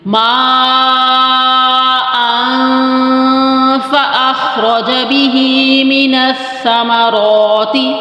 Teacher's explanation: دو زبر کی تنوین کے بعد جب فا رہا ہو تو پھر ہم اخفا کس طرح کریں گے کہ آواز کو فا کے مخرج کی طرف لے کے جاتے ہیں. اب جب ہماری اوپر والے دانت نیچے والے ہونٹوں کے شکم میں لگتے ہیں تو حرف فا ادا ہوتا ہے. · جب ہماری اوپر والے دانت نیچے والے ہونٹوں کے شکم میں لگتے ہیں تو حرف فا ادا ہوتا ہے. تو یہاں پر آپ نے پہلے فا کی شکم کی طرف یعنی زبان کو جو ہے نیچے والے ہونٹوں کے شکم کی طرف لگانا نہیں ہے.